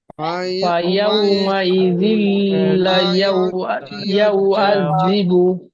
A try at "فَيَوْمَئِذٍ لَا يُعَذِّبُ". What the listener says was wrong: এখানে লামটি টান হবে, এই লামটি লাম আলিফ জবর লা, এটা টান হবে। فيومئذ لا